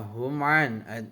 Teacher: ada huruf mim mati atau sukun bertemu dengan huruf ain, cara bacanya terang di bibir dengan mulut tertutup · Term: Idhar safawi